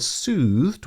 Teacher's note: the word soothed with its elongated vowel ooh sound and the soft sibilance of the S sound is a gentle sounding word